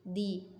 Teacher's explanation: Ya, ujung lidah di mana ketika mengucapkan huruf dhad makhrajnya kurang sempurna, dia akan cenderung dominan di ujung lidah. Ya, ujung lidahnya dominan sehingga suaranya seperti dal, yaitu di. Nah, ini tebal, ini tipis ya, seperti itu.